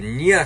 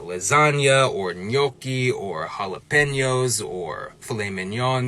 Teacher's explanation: that nya sound is also called a palatal nasal, because it's made with your hard palate at the top of your mouth, and also air is coming through your nose